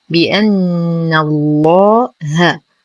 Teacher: نغلظ اللام في اسم الجلالة لأنها سبقت بفتح